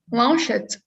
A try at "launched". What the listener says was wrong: remember ah because it sounds like lunched like almost right so ah very open